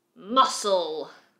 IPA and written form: mʌsəl (Muscle)